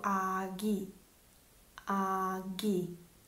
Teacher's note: tra due vocali, il suono diventa più una G